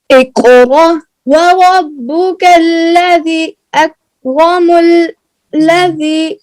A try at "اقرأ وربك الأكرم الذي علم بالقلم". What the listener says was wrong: کیا کرتے بیٹا؟ دیکھو نا، غور سے دیکھو. اکرم چھوڑ رہی ہو نا، پھر پڑھو.